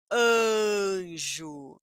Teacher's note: depois da letra A eu tenho a letra N que é uma consoante nasal então a letra A vai ficar com som nazal